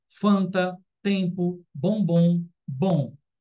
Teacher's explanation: é como se esse M e esse N não existisse, virasse um tio, né? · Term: dígrafo vocálico